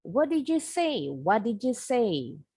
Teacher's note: Jangan lupa pengucapan did you-nya bunyi D dengan Y, bunyinya jadi J.